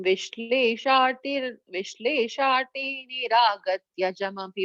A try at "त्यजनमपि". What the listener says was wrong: and second line is not, it's a comma after Martya Shiksharthamevam, so no need of joining them together. And second line on the Tyajana, Tya, it's a full Tyajanam Abhibhavet.